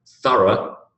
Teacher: The sound of O-U-G-H in thorough is what we call a schwa.